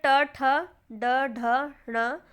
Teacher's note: जिन वर्णों के उच्चारण में जीवा का अग्र भाग कठोर तालू के अग्र भाग से टकराता है उसे हम मूर्धन्य कहते हैं